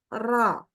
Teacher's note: harus dibaca dengan pangkal lidah yang naik Sehingga terbaca ro karena kalau ro dibaca tipis jadi ra kayak